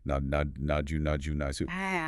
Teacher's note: But as that word moved or evolved into the Japanese phonetic system, specifically when followed by vowels that cause friction like I or U, that final T or D softened, it started to hiss. So nod plus a vowel like U became nasu. · The T or D sound slid into an S because of the mechanics of the mouth.